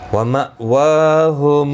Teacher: حمزہ ساکن کو جھٹکے کے ساتھ ادا کیا جائے گا. واو کے اوپر کھڑی زبر ہے، ایک الف کی مقدار کے برابر کھینچ کر پڑھیں گے.